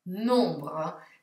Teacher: La M si sente poco e niente e l'ho pronunciata un po' come se avessi raffreddore. Allora, tutte le vocali nasali le dovete cercare di pronunciare come se aveste il naso intasato.